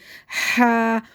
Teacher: ہواؤں کی شور کی آواز آئے گی، جیسے منہ سے ہوا کی نکالیں گے تو آواز ویسے بن جائے گی